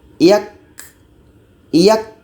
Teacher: Ada suara tertahan dulu, baru ada sifat hamasnya, ada anginnya. Yak, yak. Ada suara kita tertahan pada awalnya, itu disebut dengan syiddah.